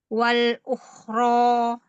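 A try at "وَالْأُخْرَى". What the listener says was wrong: Agak panjangin. Kasih tawasud sedikit. Wal ukhra. Lamnya masih tebal dan wal wal. Kurang tebal kholnya dikit.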